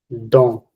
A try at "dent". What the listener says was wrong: Oui, très bien. Donc, c'était correct, tout était bien, tout allait bien.